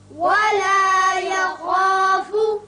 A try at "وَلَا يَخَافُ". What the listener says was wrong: خا چونکہ پرپڑا جاتا ہے حروف مستعلیہ میں سے ہے اس کی وجہ سے الف پر ہوگا ولا يخاف نہیں پڑھنا بلکہ ولا يخو خو کر کے